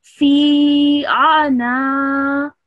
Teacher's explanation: make sure you prolong this fi sound for around 3 seconds